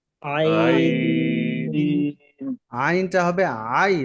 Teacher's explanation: আইন, আইন আইনটা হবে আই, তাড়াতাড়ি ধরবে, তারপরে লম্বা হয়ে নুনকে ধরবে। আইন, আইন আইন উচ্চারণ হয় গলার মাঝখান থেকে মিডিয়াম চেপে। চাপ দিয়ে, একটু চাপ দিয়ে উচ্চারণ হবে।